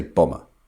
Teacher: we don't pronounce the B